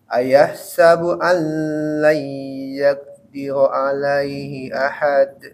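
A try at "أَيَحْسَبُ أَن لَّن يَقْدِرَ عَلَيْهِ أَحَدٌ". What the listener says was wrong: Allai yaqdira. Lamnya nggak usah ditahan. Allai gitu langsung.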